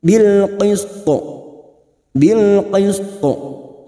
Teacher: huruf tho yang dibaca waqaf kita pantulkan th Qalqalah kubra yang mati di akhir kalimat dan dibaca wakaf